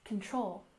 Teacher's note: we stress the second syllable in control